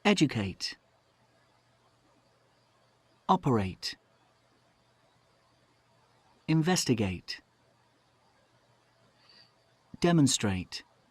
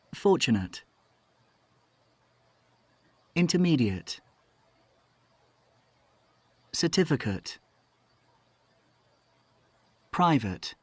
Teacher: in the first group, we have the 8 sound, operate, investigate, 8, like the number 8. But in the second group, we have the ut sound, fortunate, intermediate, ut.